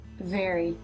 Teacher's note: the tongue is not completely forward, as it is already moving back for the R sound